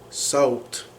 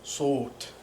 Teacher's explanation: So the diphthong of ow is dropped and you just have saut